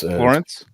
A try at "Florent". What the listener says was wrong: No, it's not Florence. It's Florent with a T, so it's Florent. So you don't pronounce the T. So yeah, it's Florent.